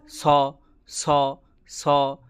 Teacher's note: পেট কাটা মূর্ধন্যেশ যেটা বলি, সেটা মূর্ধা দিয়ে হবে